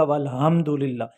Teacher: حلق کے درمیان سے نکلتا ہے ہا